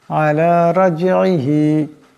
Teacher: এখানে রার উপর জবর আছে, আওয়াজটা মোটা করিয়া পড়তে হবে। রাজইহি, জিম সাকিন, জিম কলকলা হরফ, আওয়াজটিতে একটি টক্কর খাবে।